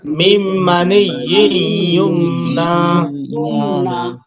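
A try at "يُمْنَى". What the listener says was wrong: হ্যাঁ, মাশাআল্লাহ, অনেকে সুন্দর বলেছে।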